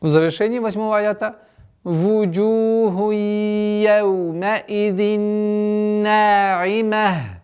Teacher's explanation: При остановке та марбута переходит в звук ха.